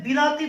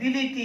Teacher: পূর্ববর্তী হস্যইকার এবং পরবর্তী হস্যইকার এই দুটো স্বরধ্বনির প্রভাবে মধ্যবর্তী আকার পরিবর্তন হয়েছে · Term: মধ্যবর্তী স্বরসঙ্গতি